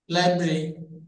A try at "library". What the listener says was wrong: ইয়ে, not লাইব্রেরি, এটা হবে লাইব্রেরি, লাইব্রেরি। লাইব্রেরি না, বেরি হবে না, এই যে বে নেই এখানে। এই তিনটা উচ্চারণ হচ্ছে আলাদা, আর ওই তিনটা হচ্ছে আলাদা। লাইব্রেরি, লাইব্রেরি। এই যে আর এর মতো, হ্যাঁ দেখেন এই যে আর এর মতো দেখতেছেন, এগুলো হচ্ছে কনসোনেন্ট সাউন্ড, এগুলো হচ্ছে কনসোনেন্ট সাউন্ড। তো আর এটা হচ্ছে এ সাউন্ড, র, এ, র, ই, লাইব্রেরি, ল, আই, বা